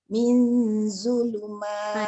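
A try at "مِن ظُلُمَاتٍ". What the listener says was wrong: Dia jangan senyum. Mil tu nipis. Mil. Dah angkat dah tengah. Mil zulumat.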